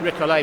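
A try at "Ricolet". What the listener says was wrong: Why do you all call him Rick Olay? I think it's Rick Ollie. I know there's an accent on the E, but there's another vowel comes before it. If it was Olay, it would just be O-L-E with an accent.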